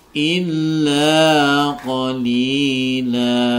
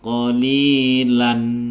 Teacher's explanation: La ini dibaca mat iwad karena ada fathaten yang dibaca waqaf, sehingga dia cara membacanya adalah menjadi berharokat fathah kemudian dipanjangkan 2 harokat atau 1 ayunan, sehingga membacanya menjadi illa qalila.